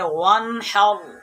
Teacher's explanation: غنہ نہیں کریں گے کیونکہ نون ساکن کے بعد حروف حلقی میں سے ہا آیا ہے